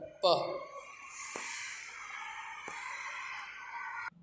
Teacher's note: ये जो प है इसका उच्चारण स्थान है ओष्ठ वर्ण, इसका उच्चारण स्थान है ओष्ठ।